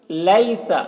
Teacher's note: یا لین ہے، اسے نرم آواز کے ساتھ جلد پڑھیں گے